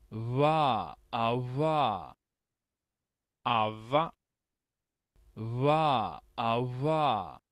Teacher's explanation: es lo que conocemos como una V aproximante